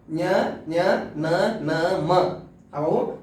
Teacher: ಮೂಗು. ಹಾಗಾಗಿ ನಾಸಿಕದ ಸಹಾಯದಿಂದ ಅಥವಾ ಮೂಗಿನ ಸಹಾಯದಿಂದ ಉಚ್ಚರಿಸಲ್ಪಡುವ ಅಕ್ಷರಗಳು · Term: ಅನುನಾಸಿಕ, ಅನುನಾಸಿಕ ಅಕ್ಷರಗಳು